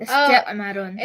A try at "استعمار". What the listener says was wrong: استعمار. استعمار. The alif is long.